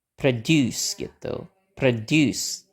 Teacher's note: Terus si O-nya itu kita pakai bentuk lemahnya. Jadi bacanya pakai schwa.